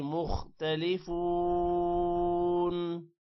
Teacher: مختلفون، خو موٹا ہوگا، فا کے بعد واو ہے، لمبا کریں گے اور باقی کسی بھی ورڈ کو لمبا نہیں کرنا۔